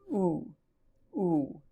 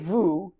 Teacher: actually a vowel called a shurik and it's pronounced oo ooh you don't say Vu you don't pronounce the consonant you just say o ooh and it appears that way before